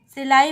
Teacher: तो केवल मुंह से हवा निकल रही है, नाक से हवा नहीं निकल रही है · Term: मौखिक स्वर